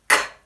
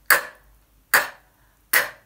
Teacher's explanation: We make this sound by touching the backs of our mouths with our tongues, like this.